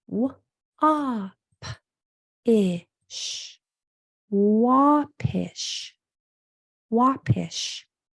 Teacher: this A is going to sound like an ah because it follows a W